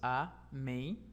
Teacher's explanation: Na palavra amém, são apenas 2 sílabas, amém. A última sílaba é a que recebe a sua tonicidade.